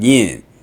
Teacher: But in the Northern dialect, the diphthong has contracted and the word is spelled YN, yin.